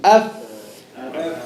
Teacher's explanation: Top teeth. Bottom lip meets with the top teeth.